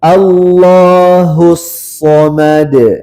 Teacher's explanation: Nah, jangan ragu dipantulkan. Kemudian shadnya kasih tebal.